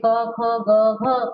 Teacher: कहाँ से आवाज आ रही है? कंठ से। तो ये क्या हुए? कंठव्य हुए ना।